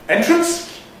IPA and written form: ˈentrəns (entrance)